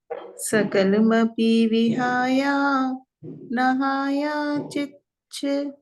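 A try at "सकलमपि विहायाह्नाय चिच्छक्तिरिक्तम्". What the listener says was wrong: ना, नहाया, नाय है ना, ये हा जो है ना या के साथ पढ़ेंगे, और ना को या के साथ पढ़ेंगे, ना के साथ हा नहीं पढ़ेंगे।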